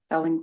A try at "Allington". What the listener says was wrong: I put an R in there, I think.